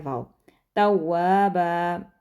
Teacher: आप अपने होंठों को गोल करते हैं तो वाव अदा होता है